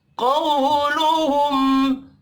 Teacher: क़ाफ हुरूफ मुस्तअलिया है, पुर पढ़ेंगे। क़ौ वावलीन है।